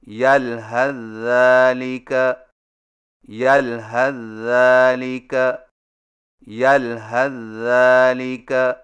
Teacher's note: سا کو ذال میں داخل کر کے ایک مشدد ذال سے پڑھیں، یعنی اس طرح یلحظ ذالک یلحظ ذالک یلحظ ذالک.